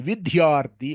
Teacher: ఆ ధ్యా కి ఒత్తు పెడుతున్నారు ధీ లో తీసేస్తున్నారు కావలసిన చోట తీసేస్తున్నారు అక్కర్లేని చోట పెడుతున్నారు